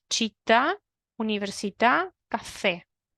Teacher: Que la última vocal está acentuada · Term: sílaba tónica